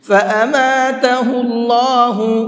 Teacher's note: یہاں پر اللہ کے لام کو منہ بھر کے پڑھیں گے، اس لیے کہ اللہ کے لام سے پہلے پیش ہے۔ اللہ کے لام سے پہلے پیش ہوتا ہے تو وہاں پر اللہ کے لام کو منہ بھر کے پڑھتے ہیں۔